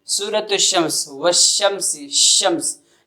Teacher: جب شین پڑھ رہے ہیں تو شین کے وقت بھی زبان کا درمیانی حصہ اوپر کے تالو سے لگ رہا ہے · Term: حروف شجریہ